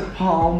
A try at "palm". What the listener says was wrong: Palm. You don't pronounce that L in palm.